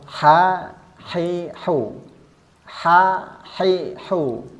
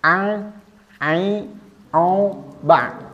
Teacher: a a o ba nanti akan ada bedanya dengan huruf ha huruf Ha ini didorong dari bawah ke atas mendorong nafas ha hi hu ha hi hu tidak ada getaran